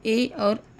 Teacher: जब हम ए बोलते हैं तो हम यह अनुभव करते हैं कि ध्वनि जो है हमारे कंठ और तालु दोनों से टकरा कर बाहर आ रही है। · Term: कंठ तालु